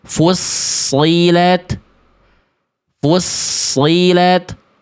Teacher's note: Ingat, tebalnya dari pangkal lidah. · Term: huruf tebal